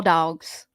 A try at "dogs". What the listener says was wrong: The way you say dogs with the W in it is